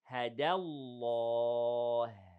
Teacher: The ha in the end is hams and it is light